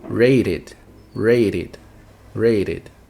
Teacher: E vai ficar com som de ID no final.